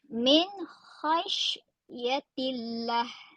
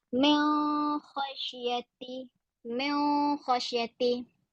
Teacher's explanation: Nun itu bila kita bunyikan dengan jelas, dia tidak dengung kerana dia tidak masuk di dalam huruf berikutnya itu iaitu huruf kha. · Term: izhar halqi